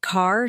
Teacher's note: American accent often uses a strong R sound. Words like car sound like car.